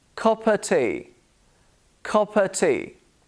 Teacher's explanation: The of becomes a schwa sound.